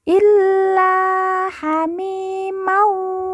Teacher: la yang bertasdid langsung ditekan ditahan dua harakat kemudian la kita baca panjang dua harakat karena di depannya terdapat